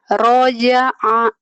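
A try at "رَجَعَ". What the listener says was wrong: Roja'a, pinter, hebat.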